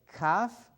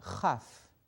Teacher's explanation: So we have a kaf versus a chaf. With the dagesh is the strong K. Without it is a soft chaf.